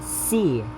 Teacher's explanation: high front, unrounded, long vowel